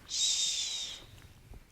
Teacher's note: Tongue blade at the back of the alveolar ridge. Sh is unvoiced.